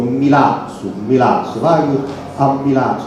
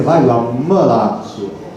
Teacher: Oppure per esempio Milazzo, vai a Milazzo, no, in realtà si dovrebbe dire vai a Milazzo, che la prima I è una I molto cupa